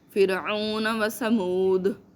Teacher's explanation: سمود میں زال کو قلقلہ کرنا